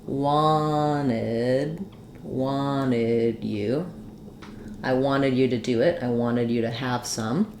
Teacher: So in wanted you, first of all, I can say wanted with my t sound. When I have nt in the middle, often we native speakers of American English will drop that t. So they'll say this more like wanted you. · when I do wanted you, I tend to use an unreleased D here.